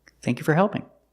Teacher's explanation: usually the word for is not stressed and it's pronounced fur